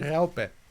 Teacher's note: It's a rolling R, as most R's in German are, and an AU sound right after it, which I don't think AU at all exists in the English language.